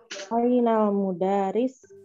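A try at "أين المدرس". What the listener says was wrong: Ainal mudarris. Jadi R-nya dikasih tasjid saja, Bu. Mudarris. Mudarris.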